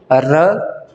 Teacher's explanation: इसके लुंठित कहने का अर्थ ये हुआ कि जब भी र का आप उच्चारण करते हैं तो जीभ में बहुत ज़्यादा कंपन होता है, सबसे अधिक कंपन होता है र के उच्चारण में।